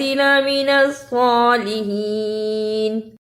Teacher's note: اسے صالحین نہیں پڑھنا، سین کی آواز نہیں آنی چاہیے